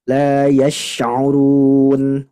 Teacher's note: Shinnya lebih tafasyi lagi Bu.